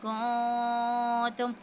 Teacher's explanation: نون ساکن کے بعد کیف ہے تو یہاں پہ اخفا کی صورت میں غنہ کریں گے